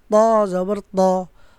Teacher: ত টা মোটা একটু টনটন হবে